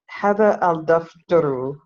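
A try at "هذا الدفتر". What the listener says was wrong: Good. Hada ad-daftaru.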